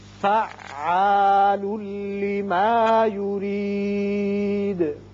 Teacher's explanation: یہ را باریک پڑھیں گے، نیچے زیر ہے